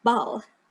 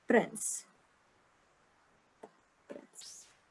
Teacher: where the B is like a deeper sound and the P is more like a popping sound